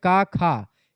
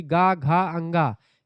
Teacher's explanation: जैसे क, ख यह आपका अघोष है। जबकि ग, घंगा यह आपका सघोष या घोष में आता है।